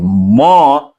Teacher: और जब कहेंगे म तो नाक का सहारा लेना पड़ता है